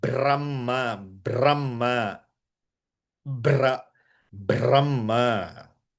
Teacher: ba is alpa ba only. It's not ba as Mahaprana.